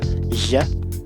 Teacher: the voiced lateral fricative